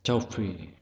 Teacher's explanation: Trọng âm rơi vào âm tiết thứ nhất.